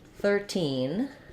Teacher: in 13 I'm going to stress on teen